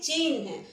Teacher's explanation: यानी पहले हा बोलते हैं और फिर ना बोलते हैं